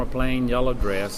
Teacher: we had just a little bit of diphthongization in the dress example there